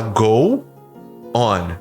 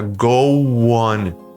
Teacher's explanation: Não, você vai juntar o finalzinho do O com o on.